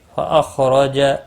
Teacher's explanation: خا مستعلیہ ہے، پر پڑھا جائے گا، را زبر کی وجہ سے پر پڑھا جائے گا